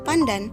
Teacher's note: dalam kata pandan sebelum D itu diucapkan secara apiko palatal perubahan nasal apiko alviolar n menjadi nasal apiko palatal n karena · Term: asimilasi regresif